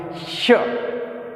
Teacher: जब अपने इसका उच्चारण करते हैं तो जीभ का मध्य भाग कहाँ स्पर्श करता है? तालु में, श। ठीक है, इसलिए ये तालु अवयव के अंतर्गत आ जाते हैं। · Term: तालव्य से